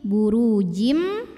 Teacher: Lalu berikutnya idgham bi gunnah, karena tanwin kasrah menghadapi huruf mim, maka tanwin masuk ke mim, burujim, dan tahan bunyi M-nya, dengung.